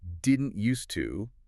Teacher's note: If you try to say "didn't used to" out loud, pay attention to what your mouth has to do. You have to articulate the sharp T at the end of didn't, immediately transition into a soft D at the end of used,